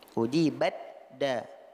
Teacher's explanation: Di mana ta-nya sudah idghamkan ke dalam huruf dal